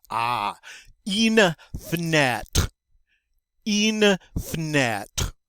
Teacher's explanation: that E after the F is what we call a mute E. The French don't normally like to pronounce those. So it's like you're saying f and then net, fenêtre.